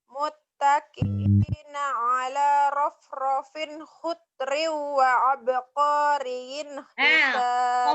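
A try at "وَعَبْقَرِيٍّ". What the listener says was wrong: Qafnya pendek, sayang. Wa abqariyin. Qafnya cuma satu harokat.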